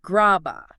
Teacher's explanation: >> A is a vowel. In natural speech, the b slides over to the a. It stops sounding like grab a and starts sounding like a totally new word. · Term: blending